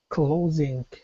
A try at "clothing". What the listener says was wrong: No, not k. Don't drop your tongue. Your tongue is up, closing. You've got your tongue up there high, blocking air for the ing sound. Don't drop it suddenly, because if you do, you're going to make a K sound, and it's going to sound like closing. Instead of closing, it'll sound like closing. Closing.